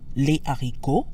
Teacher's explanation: The S in les stays silent because the aspirated H in haricot follows the same rule as other words that start with a consonant.